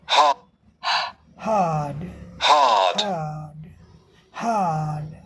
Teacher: हवा पेट में से निकल कर जा रही है, मुंह में नहीं बनाया जा रहा है। पेट से हवा एकदम यहाँ से ले लिया जा रहा है, यहाँ पेट से।